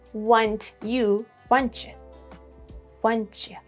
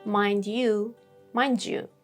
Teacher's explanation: T and y become ch. D and y become j.